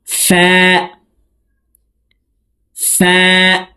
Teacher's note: ফার উচ্চারণ উপরের দাঁত নিচের ঠোঁটের পেটের সঙ্গে লাগিয়ে উচ্চারণ করব,